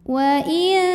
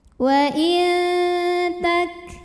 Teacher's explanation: saat mengucapkan huruf nun kita sudah siap-siap ke makhraj huruf ta ujung lidah kita siap-siap ditempelkan ke Pangkal gigi seri atas makhraj dari huruf ta tapi baru mau saja sehingga menghasilkan dengungan yang sedikit suara masuk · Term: ikhfa Hakiki